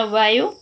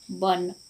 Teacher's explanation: वो का उच्चारण हिंदी में वो होता है, जबकि ओडिया में ब होता है। जैसे शब्द एक वन, हिंदी उच्चारण वन और ओडिया उच्चारण वन।